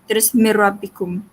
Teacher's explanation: Jadi bila ada syaddah ni kita tak perlu bacalah nun mati ni, tak perlu dengung, kita terus masuk.